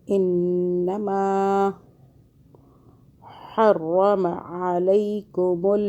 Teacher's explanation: ہا کو حلق سے پڑھیں، حلق سے تھوڑا سا آگے سے